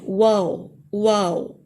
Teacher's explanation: اس میں جو یہ ہونٹوں سے ادا ہوتا ہے واو، لیکن اس میں ہونٹ گول ہو جاتے ہیں